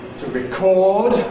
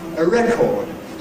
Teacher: Typically the verb is to be stressed on the end, disyllabic verb. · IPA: /rɪˈkɔːd/